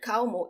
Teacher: the trick is not to roll it for this word kaomu it sounds like the w in english in a word like cow or now